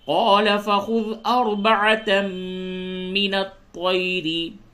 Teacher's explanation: طا کو پر کریں اور را کو باریک کریں